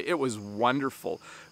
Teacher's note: I usually respond by saying it was wonderful and I do emphasize the word wonderful